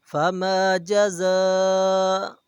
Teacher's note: جزا کے اوپر مد ہے تو اسے 4 الف کے برابر کھینچا جائے گا